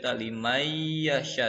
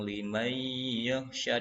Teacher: Jadi nun sukun bukan liman yakhsha, limay yakhsha, seakan-akan nunnya enggak ada. Jadi langsung limay yakhsha dan dibaca dengung. Itu idgham bi gunnah.